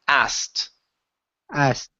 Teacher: skip over the k sound and pronounce a t instead of saying ased the word is asked asked there you